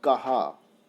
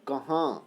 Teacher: एक शब्द ऐसा है जिसमें चंद्रबिंदु नहीं है अर्थात अनुनासिक नहीं है और एक शब्द ऐसा है जिसमें अनुनासिक है · तो जब कभी मुंह और नाक दोनों से हवा बाहर आती है, तो वहां पर अनुनासिक का प्रयोग माना जाता है। इसीलिए कहा, कहाँ, कहाँ में हवा नाक से भी निकलती है और मुंह से भी निकलती है